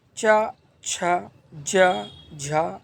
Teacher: जिन वर्णों के उच्चारण में जिह्वा का मध्य भाग तालु से स्पर्श करता है उन्हें तालव्य वर्ण कहते हैं।